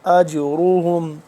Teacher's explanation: اس پہ جیم پہ قلقلہ کریں گے اور را موٹا کر کے پڑھیں گے